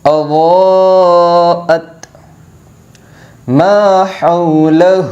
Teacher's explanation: اس ہا کو حلق سے ادا کیا جائے گا